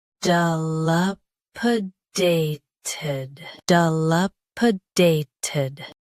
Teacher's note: Both US and UK have the same pronunciation of this word. Stress day. Keep p soft and finish with ted clearly.